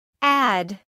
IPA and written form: ˌæd (add)